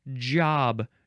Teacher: It's a J, which is more in the front of your mouth. I guess it's a soft G.